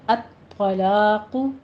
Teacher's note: الطلاق میں طاء کو پر پڑھیں گے، طاء کی تشدید بھی ہے، سختی کے ساتھ رک کر ادا کریں گے۔ آگے طلاق نہیں کہنا، لام باریک رکھنا ہے، قوف کو پر پڑھنا ہے، الطلاق، الطلا لا باریک ہو جائے گا، الطلاق، قوف بھی پر ہو جائے گا۔